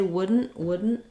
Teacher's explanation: So it is tricky to say wouldn't. You have to be very short on your N and unreleased on the T and the D.